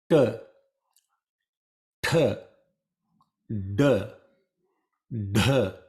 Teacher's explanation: the cerebral sounds, where the tongue is touching the cerebral area of your mouth.